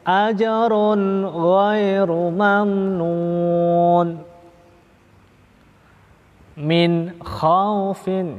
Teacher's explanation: bacaan nun mati atau tanwin sekali lagi tanpa jeda, tanpa saktah, langsung, tanpa disertai dengung, dibaca jelas, itu namanya idhar atau bisa disebut juga idhar halqi.